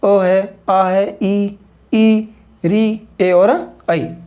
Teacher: वे स्वर जिनके उच्चारण के समय में आपके ओष्ठों की जो आकृति है वो गोल नहीं होती है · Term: अनावृतमुखी